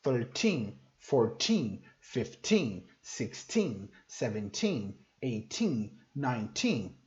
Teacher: Os teens, a sílaba tônica, né, o estresse da palavra está no final dela.